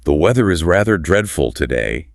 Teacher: with perfectly sharp consonants, that is RP